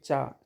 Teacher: चा में आप तलवा आपका टच होगा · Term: तालुब